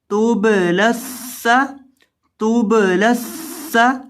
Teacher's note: لام زبر سین لس، توب لس، سین زبر سا، توب لس سا، توب لس سا، سین میں آپ نے سیٹی کی آواز پیدا کرنی ہے